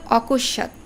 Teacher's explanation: শব্দ ছিল অকস্ত অকশাতে ম ফলার কি উচ্চারণ হয়েছে হয়নি কিন্তু ম ফলার প্রভাবে স এর উচ্চারণ দুইবার হচ্ছে যাকে আমরা বলবো উচ্চারণ দৃত্ত অর্থাৎ দুইবার উচ্চারণ তো এই দ্বিতীয়